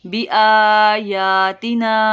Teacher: آ اور یا کو 1 الف کے برابر لمبا کرنا ہے